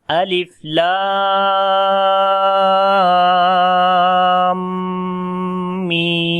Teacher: So madde lazim harfi musaqqal and madde lazim harfi mukhaffaf, both mads are equal in elongation. Like both mads we long 3 alif, which is almost 6 harakat